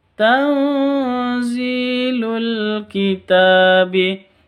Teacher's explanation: nun mati bertemu dengan Za cara bacanya samar disertai dengung dua ketuk karena bacaan Ikhfa Hakiki